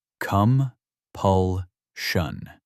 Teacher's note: Three syllables. Stress on the second.